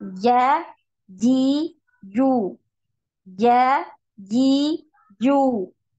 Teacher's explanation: jadi ketika antuna mengucapkan huruf Jim tidak ada nafas yang keluar dari dalam mulut ya tidak ada hembusan nafas